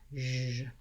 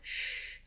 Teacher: my zh sound is similar to my sh sound, sh, but my voice is on, zh.